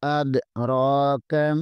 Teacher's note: را کے اوپر کھڑی زبر ہے، اسے بھی 1 الف کے برابر کھینچیں گے، اور کاف کو بریک پڑھیں گے۔